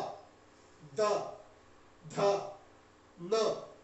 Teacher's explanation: इन वर्णों के उच्चारण करने में जीभ को दांत की आवश्यकता होती है, अर्थात दांत से स्पर्श होता है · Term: दंत्य वर्ण